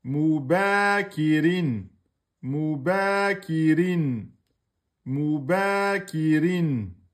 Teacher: Mou aminci, ba deux temps aminci, kef kasra aminci et rin aminci. Tout est aminci. Mais vous mettez juste le deux temps sur le ba.